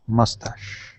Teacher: this word is mustache with the uh the accent at the beginning